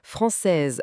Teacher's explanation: Le S muetes se met à vibrer. Il produit ce son en Z, un petit bourdonnement. française avec ce ZS à la fin. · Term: la sonorisation, sonorisation